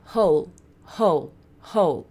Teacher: Não é som de U no fim, é som de L